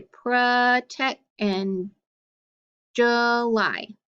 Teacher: the o and the u can make the schwa sound if they are open and act unaccented